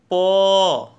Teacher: जैसे प का उच्चारण है प, आप देख रहे हैं कि दोनों होठ मिलते हैं फिर खुलते हैं, तो इस प का उच्चारण स्थान ओष्ठ हो गया।